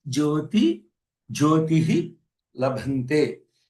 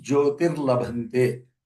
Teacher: The Visarga becomes Rakara between a Visarga and the La. Rakara will be introduced for Jyotir Labhante.